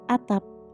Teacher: Cara pengucapannya yaitu dengan huruf P dihentikan.